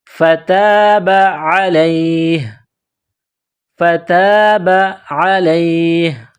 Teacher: جب وقف کریں گے تو ہا کو سائلنٹ کریں گے